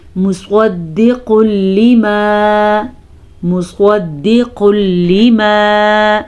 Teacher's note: صاد کو پر پڑھیں گے، میم کو کھینچ کے نہیں پڑھیں گے